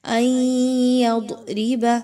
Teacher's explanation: نون ساکن کے بعد یا کا حرف آ گیا، ادغام ود غنہ۔ · ان یضرب مثلا ما، تنوین کے بعد میم آ گیا، ادغام ود غنہ کیجئے، تنوین کی آواز کو میم کی آواز کے اندر مکس کیجئے